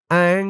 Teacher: ইকফা গুন্নাহ, নুন সাকিনের পরে ইকফার হরফ যা আসছে।